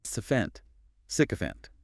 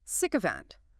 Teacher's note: Stress on the first syllable. 3 syllables.